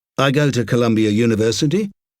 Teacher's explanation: an ostensibly declarative sentence that is uttered on a rising note of apology, and that ends with an implied question mark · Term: uptalk